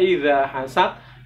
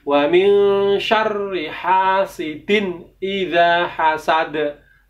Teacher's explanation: Yang benar dal itu qalqalah, maka harus dipantulkan, harus dibendalkan. Maka cara membaca yang benar adalah wa min syarri hasidin idza hasad.